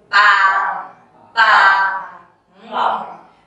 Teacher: lower like an angry tone a deep tone ba ba maybe say it a bit shorter can help you